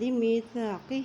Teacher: ہا کے نیچے کھڑی زیر ہے، ایک حرکت لمبا کریں گے